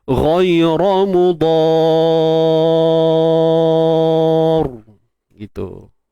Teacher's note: Dia yang pentingnya kita tebalkan ra tu lah. Bila kita matikan ra ni tebal.